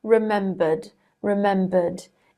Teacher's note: It's pronounced with a D because it ends with a schwa vowel sound, which is voiced.